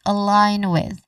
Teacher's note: You stress on line